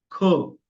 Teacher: हम ख ख और ग को जब उच्चार करते हैं तो हमें यहां से हृदय से हवा निकालनी पड़ती है तो ये महाप्राण उसे बोलते है